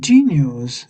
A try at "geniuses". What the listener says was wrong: but this is plural, so there's an es on the end. So geniuses, geniuses.